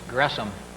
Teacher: By the way, the word or name Gresham is supposed to be pronounced, I understand, with a division between the S and the H. It's not an SH sound, but it's a syllable division there